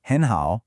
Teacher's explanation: 2 third tones in a row? It's written with 2 third tones, but we say it with a rising tone first.